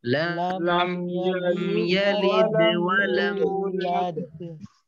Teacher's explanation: লিদ এইখানে হবে কলকলা কম যেহেতু ভিতরে আসতেছে, আর লাদ এখানে কলকলা কিন্তু বেশি। লাম ইয়ালিদ ওয়ালাম ইউলাদ لم لم يلد يلد ولم ولم يولد يولد এখানে মিমে তাওয়াসুত জজম যুক্ত মিম, তাওয়াসুত যদি আদায় না করি তখন কিন্তু মিমের জজমটা অস্পষ্ট হওয়ার কারণে অনেকটা জেরের উচ্চারণ হয়ে যাবে।